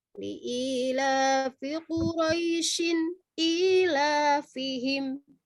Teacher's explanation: Kalau dia dilanjutin, maka dia bacaannya lin, bukan matlin. Liila fi Quraisyin ila fihim.